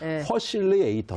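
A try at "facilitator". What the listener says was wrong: F 발음이 안 되는 식이네요. 퍼실리에이터. 못 알아들을 것 같아. 아메리카 사람들이.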